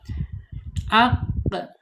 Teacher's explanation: Secara makhraj ada di allisan yaitu di pangkalida. pangkal lidahnya terangkat ya menyentuh lawannya yaitu langit-langit yang ada anak lidahnya di situ ya. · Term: qop